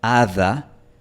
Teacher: este sonido que estoy pronunciando aquí, hada, para un hablante de inglés es una TH, pero para un hablante de español es una D. Y este sonido a veces puede ser más débil, a veces puede ser tan débil que desaparece por completo.